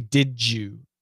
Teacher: D plus Y equals J, and T plus Y equals CH.